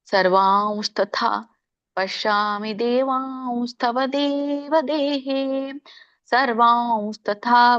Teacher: ಅನುಸ್ವಾರ ನೀವು ವ ಅಂತ ಉಚ್ಚಾರಣೆ ಮಾಡ್ಬೇಕು. ಸಾನುಸ್ವರ ಅಂತ ಕರೀತಾರೆ ಇದಕ್ಕೆ.